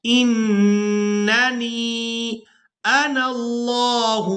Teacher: پہلے نون مشدد پر غنہ کریں گے اور دوسرے نون کو ہم نے یاء مدہ کی وجہ سے کھینچ کر ادا کرنا ہے